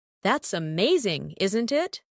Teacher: That's amazing, isn't it? Rise and fall for emotion.